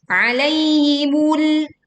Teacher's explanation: lam kita tekan, tahan sebagian suara di ujung lidah dan pastikan lam terdengar tipis